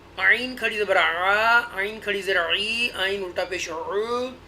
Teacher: وسط حلق سے آپ نے یہ عین کا مخرج نکالنا ہے